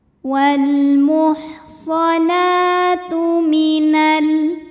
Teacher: Wal muhsanah, nah mad tabi'i muqaddar karena huruf nun berbaris fathah panjang, maka cara bacanya dipanjangkan nunnya 2 harokat saja.